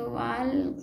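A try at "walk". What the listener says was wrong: तो फिर ल बोलना ही पढ़ना ही नहीं है। एल के को क्या पढ़ना है, क।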